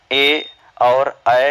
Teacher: ए और ऐ जो ध्वनियाँ होती हैं कंठ और तालु के योग से बने होते हैं, चूंकि आ प्लस ई के योग से बनते हैं। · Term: कंठ तालव्य